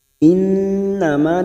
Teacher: nun yang bertasdid gunna musaddadah kita tengungkan dan ditahan selama 3 harokat